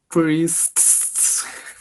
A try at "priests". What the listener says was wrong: I mean, you kind of went a bit overboard with the last, but that's usually how it is.